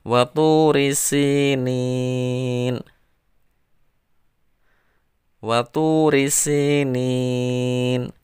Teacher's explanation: Panjangnya harus berbeda antara si dan nin. Lebih panjang nin karena mad arid. Si itu mad tobi'i, dibaca panjang satu alif.